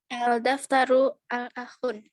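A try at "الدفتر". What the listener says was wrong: Al-daftaru atau ad-daftaru? Ad-daftaru atau ad-daftaru atau al-daftaru? Al-daftaru atau ad-daftaru? Ad-daftaru. Kenapa kok bacanya harus seperti itu? Ad-daftaru bukan al-daftaru.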